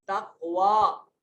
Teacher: तक़वा में क़ाफ साकिन है हुरूफ कलकला में से, तो यहाँ कलकला वाजिब होगा।